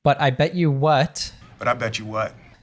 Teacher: when we have a t plus a y in American English we change it it morphs into a CH sound same actually happens if you have a d plus a y